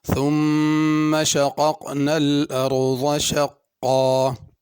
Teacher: ثم کی میم پہ غنہ کرنا ہے. شقق دونوں قاف بڑے ہیں تو شقق نہ پڑھ لیا جائے. · ارض میں را پر کر کے پڑھنی ہے، ضاد بھی پر کر کے پڑھنا ہے، ذال یا ضا نہیں پڑھنا.